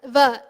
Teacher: when we say va, we use the danta, the teeth, to hit the lips. When we do that, the teeth can be the sthana, they can also be the karana. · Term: vakara